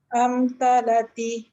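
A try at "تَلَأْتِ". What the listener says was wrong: Talak. Dia ada hamzah mati tu. Talakti salah.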